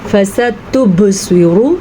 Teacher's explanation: با کے اوپر ساکن آنے کی وجہ سے یہاں پہ قلقلہ ہو رہا ہے، آپ نے بھی پڑھا بھی ہے، دیکھیں یہ با حروف قلقلہ میں شامل ہے، تو یہاں پہ ساکن آنے کی وجہ سے یہاں پہ قلقلہ ہو رہا ہے۔